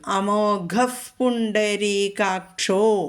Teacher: വിസർഗം കഴിഞ്ഞിട്ട് പ വന്നതുകൊണ്ട് അവിടെ നമ്മൾ എഫ് എന്ന് ചൊല്ലും അമോഗഫ് ഫ എന്ന് ചൊല്ലും അമോഗഫ് പുണ്ഡരീകാക്ഷോ അവിടെ ഓകാരം വന്നു പുണ്ഡരീകാക്ഷഹ എന്നുള്ളത്